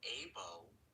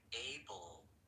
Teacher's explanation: instead of saying able with your lips, you should say able with the tip of your tongue